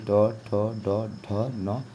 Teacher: ट जो है आपका मूर्धा से बोला जाता है